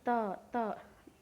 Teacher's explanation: जीभ जो है आपकी वो दांत पे टच हो रही है।